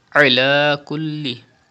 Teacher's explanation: And there is zabar before the lam of Allah's name, so the lam will be thick. Ala kulli, stretch khada zabar on lam.